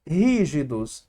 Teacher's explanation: a sílaba tônica é antepenúltima é proparoxítona